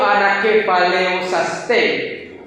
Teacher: Yo la pronuncio Anakephalayosastai, porque en el griego koiné la A con la I es un diptongo y se suena E